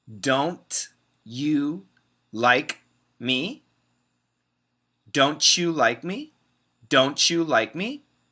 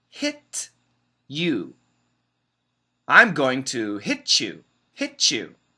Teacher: But many Americans combine the T and the Y to make a CH.